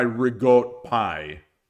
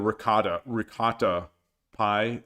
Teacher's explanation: Italian Americans started cutting off some of the final vowels